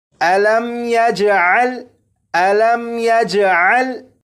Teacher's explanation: अब यहाँ से पढ़ेंगे और यहाँ पर देखें, ये मीम साकिन है, इस मीम साकिन में भी गुन्ना नहीं करेंगे